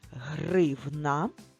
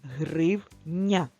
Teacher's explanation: Отже гривна і гроші гривня чим вони відрізняються ці звукові моделі у прикраси гривни всі приголосні тверді а в слові гривня останній приголосний звук буде м'яким